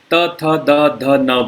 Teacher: त वर्ग में हम लोग दांतों के साथ जिह्वा का स्पर्श कराते पीछे की तरफ से, दंत मूल में दांत, जहाँ दांत के जड़ के साथ जीभ को लगाते हुए त, थ, द, ध, न बोलते हैं।